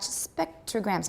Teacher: As you might expect, there is no aspiration after the P in spectrograms